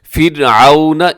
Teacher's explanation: اور فرعون اس میں را باریک ہوگی